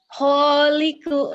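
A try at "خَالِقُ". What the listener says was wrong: Kholiku. Dari tadi salahnya gitu, suka lupa titik ya. Jim dan ho sering ketuker.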